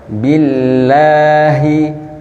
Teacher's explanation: Bi bertemunya bibir atas dan bibir bawah.